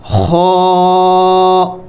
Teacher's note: یہ حروف حلقی میں سے ہے، اس کو حلق سے ادا کرنا ہے۔ خا، یہ موٹے حروف میں سے ہے، اس کو موٹا کر کے ادا کرنا ہے، اور یہ بھی حروف حلقی میں سے ہے، یعنی حلق سے ادا کرنا ہے